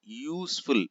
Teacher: See again, useful, use metal, a metal we can say here, but useful is starting with U, but the initial sound is ya, so we have to use a.